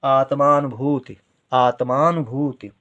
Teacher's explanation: आत्मा आ, यहाँ पर बड़े आ का उच्चारण हो रहा है आत्मा, ता का उच्चारण बहुत कम देर के लिए, माँ का उच्चारण ज़्यादा देर के लिए